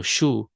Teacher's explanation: in Acadian you don't have an H you have a sh sound